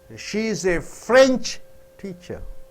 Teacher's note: When you stress on French teacher, the teacher teaches you French.